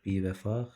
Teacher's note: Bivəfa sözü məsələn, i uzanır